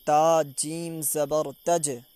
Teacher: یہ جو جیم ہے حروف قلقلہ میں سے ہے تو اس لیے اس کی آواز واپس لوٹ کر آئے گی